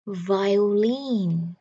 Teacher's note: Trọng âm nằm ở âm cuối.